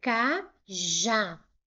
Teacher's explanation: Se eu separar em sílabas, eu tenho ca, já. A última sílaba foi a sílaba mais forte. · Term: oxítona